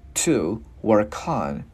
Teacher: Chữ này chữ U mình chu môi. Chữ T mình bật đầu lưỡi giữa hai răng